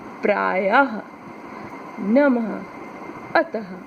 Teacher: इसमें आधे ह की भांति हमें ध्वनि सुनाई देती है। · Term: विसर्ग